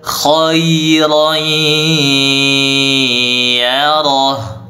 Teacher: Tanwinnya dimasukkan ke huruf ya, lalu disertai dengan dengung dan ditahan dengungnya yang lama. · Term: idgham bi gunnah